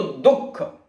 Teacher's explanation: तो बोले कि जब दुख शब्द बोलते हैं तो दुख यानी द के बाद ह की ध्वनि हल्की सी जो सुनाई दे रही है